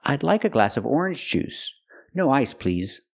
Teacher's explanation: use the vibration sound Z with the word please